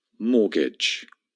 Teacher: First of all, the T is completely silent. Imagine it's not there.